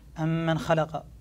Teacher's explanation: فعليك أن تصل فتقول أم من خلق، ولا تسكت سكتة لطيفة